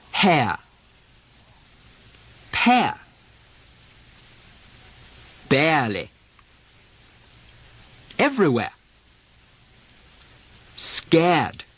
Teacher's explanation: The R drop from the air sound leaves the diphthong air